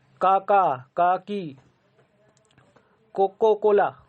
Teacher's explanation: तो ये जो क से आ रहा है, क वर्ण निकल रहे हैं, ये कंठ से निकल रहे हैं।